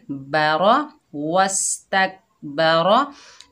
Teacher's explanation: पा के ऊपर ज़बर, रॉ के ऊपर ज़बर, दोनों को बगैर खींचे पढ़ेंगे, बारा वस तक बारा। रॉ जो है मोटी पड़ी जाएगी, पुर पड़ी जाएगी।